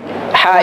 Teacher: Ha ini adalah tengah tenggorokan, atau istilah tajwidnya adalah wasatul halqi. Ha dia jelas, halqi berarti hurufnya di tenggorokan.